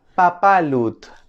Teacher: La P en fonética se le conoce como una oclusiva bilabial sorda.